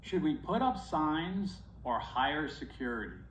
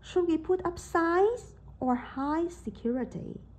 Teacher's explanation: focus on how the intonation raises then falls